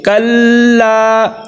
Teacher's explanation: کلا، پہلے بتا چکا ہوں کہ تشدید والے حرف کو سختی کے ساتھ رک کے کلا، اور لام کو لمبا کرنا ہے، اس کے ساتھ آگے الف مد آ گیا